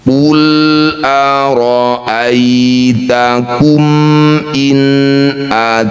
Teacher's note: Inakum sama nun sukunnya baca dengan jelas. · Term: izhar halq